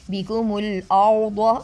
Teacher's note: را موٹا کریں گے اور ضاد کو بھی موٹا پڑھیں گے